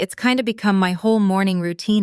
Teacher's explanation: Notice kind of reduced to kinda and it has reduced to it's, both extremely common in casual native speech.